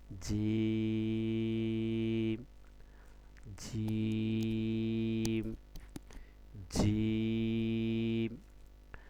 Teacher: জিমটা কতটুকু টান হবে দেখেন, এর দূরত্ব কতটুকু, একটা, দুইটা, তিনটা দাগ, ঠিক আছে, তিনটা দাগ মানে কি তিন আলিফ, তো তিন আলিফ দূরত্ব, জিম, জিম, জিম। তো আপনাকে তিন আলিফ টানতে হবে